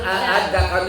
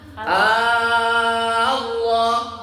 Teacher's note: Dibacanya panjang enam harakat. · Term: ibdal